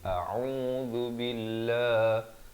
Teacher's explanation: Hamzahnya makhraj di pangkal kerongkong dan ain di pertengahan kerongkong au dengan kadar 2 harakat.